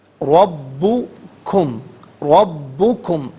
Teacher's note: ربکم، ربکم، را پر زبر ہے، را کو پر کر کے پڑھا جائے گا، با مشدد ہے اور اسے جماؤ کے ساتھ پڑھیں گے